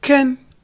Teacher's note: Instead of saying can't, we say can. The T is dropped.